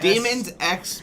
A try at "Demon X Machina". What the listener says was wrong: You're so close. Just get rid of one S. There's no S. No S.